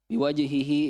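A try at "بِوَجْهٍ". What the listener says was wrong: tanwin biwajhin. Kan akhir kata itu hi-nya itu akhir kata. Bukan domir. Bukan domir.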